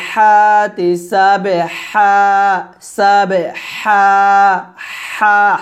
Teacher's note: হাটা চিকন করে গলার মাঝখানে নিয়ে আসবেন